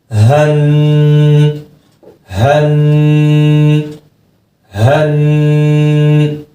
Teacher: حن حن. حروف حلقی ہے، حلق کا آخری حصہ جو سینے کی طرف ہے، سخت تھوڑا بھاری آواز میں آواز نکلے گی اس کی.